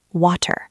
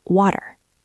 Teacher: In British English, you might hear a clearer T, water. · When a T is between two vowel sounds, it gets soft. It stops being a sharp T and starts sounding almost like a quick, soft D. We call this the flap T.